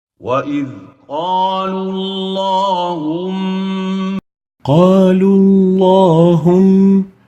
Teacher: the lam of Allahum has to have tafkheem due to the dhamma and the waw before it.